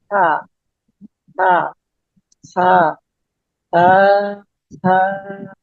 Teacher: এই সাটা বলার সময় আমাদের জিহ্বার আগাটা এই উপরে যে দুই দাঁত আছে, দাঁতের সাথে মিলবে।